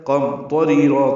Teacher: میم ساکن پہ اظہار شفوی ہے · ری را باریک ہے. یا مدہ ہے دو حرکات لمبا کریں گے